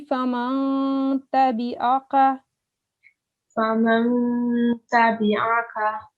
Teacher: So ikhfa means concealing the sound. So you have to conceal the noon sound and hide it.